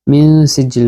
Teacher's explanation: নুন সাকিনের পরে সিন আসছে, ইখফা। সিজিল, আবার সিজিল হচ্ছে মদ।